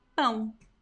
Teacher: So the strong pronunciation here is the nasal a, okay? And then we have the u very weak. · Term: diphthongs